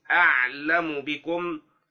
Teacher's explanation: المعنى: الحرف الخامس عشر حرف الميم، وهذا الحرف إذا تحرك قبله وأتى بعده باء مثل أعلم بكم، فإن الميم تسكن وتخفى عند الباء مع التحرز من كز الشفتين أو إطباقهما